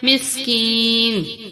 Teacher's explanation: کاف کو تھوڑا کھینچا کیونکہ اس کے ساتھ یا ہے